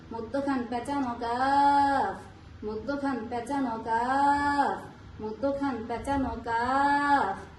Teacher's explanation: জিহ্বার গোড়া হইতে একটু আগে বাড়াইয়া তার বরাবর পরে তালুর সঙ্গে লাগাইয়া